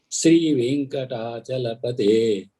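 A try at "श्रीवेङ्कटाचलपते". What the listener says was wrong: Please note that it is Shri Venkatachalapate, all of you. It is not Sri Venkatachalapate. It is Shri. Shra. Shri Venkatachalapate Tava Suprabhatam.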